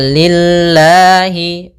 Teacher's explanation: ini lamnya tipis Yaitu lafz didahului dengan huruf kasrah maka tipis